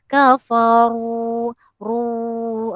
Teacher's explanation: Ra yang berbaris hadapan dibaca dengan tebal. Tebal bermaksud lidah terangkat.